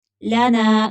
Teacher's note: نون کو کھینچ کر پڑھیں گے، خالی الف ہے